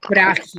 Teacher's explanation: Frágil se tiene la mayor fuerza de voz en fra